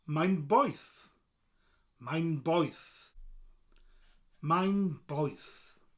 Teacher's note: Poeth. Mutates again. P becomes a B sound.